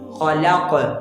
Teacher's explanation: وہ وقف کی وجہ سے ساکن ہو رہا ہے، ٹھیک ہے۔ تو اب لفظ کا آخری قاف ہے وہ بحالت وقت میں ساکن ہے، اب اس پر جو قلقلہ ہوگا وہ قلقلہ کبیرہ ہوگا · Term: قلقلہ کبریٰ